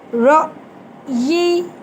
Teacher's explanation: وقف کریں گے تو یا کے مخرج پہ آواز کو روک دیں گے